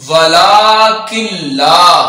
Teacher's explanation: لام کے اوپر کھڑا زبر ہے تو اس کو 2 حرکات کے برابر لمبا کریں گے